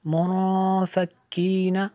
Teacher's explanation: नून साकिन के बाद फ़ा और इख्फ़ा में से है तो यहाँ पे इख्फ़ा होगा, इसलिए गुन्ना किया